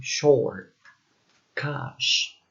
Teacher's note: sh, which is a voiceless postalveolar and fricative sound, like in short, cash.